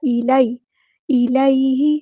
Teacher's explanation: یا ساکن سے پہلے زبر ہے تو مد لین ہو رہی ہے، نرمی سے بولنا ہے